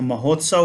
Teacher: यहाँ आ और उ मिलकर के ओ बना दिए, तो यह महोत्सव हो गया। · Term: गुण संधि